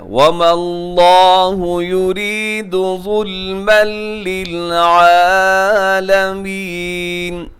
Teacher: ادغام ہو رہا ہے بغیر غننے کے. تنوین کے بعد لام ہے